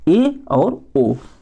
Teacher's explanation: तो समृत और अर्ध समृत से आप लोग ध्यान में रखिएगा कि समृत में मुख बंद हो जाता है और अर्ध समृत में मुख आधा बंद होता है